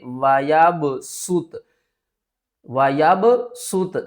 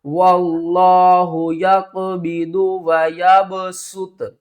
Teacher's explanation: سین کی آواز آنی چاہیے اور آواز سیٹی کی طرح آنی چاہیے